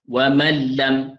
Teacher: nun tu sudah lagi tidak dibaca, itu dipanggil idgham kamil, sempurna. Lam tu telah memakan ataupun menelan huruf nun itu ke dalam ni, jadikan lam tu kuat.